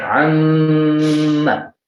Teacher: Yang pertama jelas di bibir, yang kedua gara-gara ada suara gunnah, nah itu berarti punya juga tempat keluar di hidung.